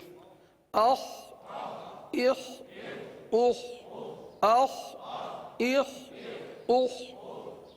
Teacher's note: خا کو حلق سے ادا کریں گے اور یہ حرف پر ادا ہوتا ہے، لہذا پر ادا کریں گے